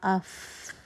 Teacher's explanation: رخاوہ بھی ہے کہ آواز چل بھی رہی ہے, اور ہمس بھی ہے یعنی ہوا آپ کے ہاتھ پہ محسوس ہو رہی ہے